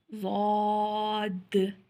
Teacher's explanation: ज़ुबान की बाईं करवट ऊपर वाली बाईं दाढ़ों के अंदर वाले मसूड़ों से लगे तो ज़ाद अदा होता है.